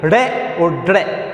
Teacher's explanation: जीभ झटके के साथ नीचे गिर रही है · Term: उत्क्षिप्त